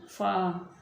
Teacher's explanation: जब ऊपर वाले जो दो दांत हैं वो नीचे वाले होंठ के दरमियान में लगते हैं तो फ़ा अदा होती है